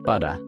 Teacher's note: Instead of pronouncing a hard T, Australian English uses a softer sound similar to D. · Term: tap T